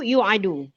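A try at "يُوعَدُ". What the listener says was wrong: Yu'adu panjang.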